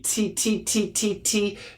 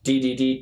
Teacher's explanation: D, D, D, T, T, T, T, T, D, D, D. So the difference between the D and the T is vibration